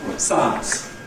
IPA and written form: ˈsaəns (science)